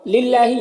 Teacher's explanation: اللہ کے لام سے پہلے لام کے نیچے زیر ہے تو اللہ کے لام کو باریک پڑھیں گے۔ کھڑا زبر ہے، یہ الف مدہ کی طرح ہوتا ہے تو اسے 1 الف کے برابر کھینچیں گے۔